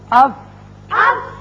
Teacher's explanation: اوپر والے دونوں دانت جب نچلے ہونٹ کے اندرلے حصے سے لگتے ہیں تو فا